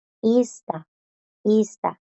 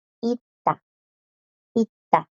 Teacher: las s no suenan porque a la par tiene esta D en la misma palabra le sigue una t y la d las bloquea y